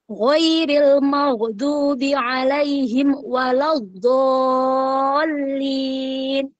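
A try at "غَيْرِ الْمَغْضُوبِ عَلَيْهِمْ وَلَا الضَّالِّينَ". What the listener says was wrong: Oke, yang tadi ya, tadi di ro tebal tipisnya, kemudian pada huruf qaf dan pada huruf dot tadi itu ya. Sip, sip.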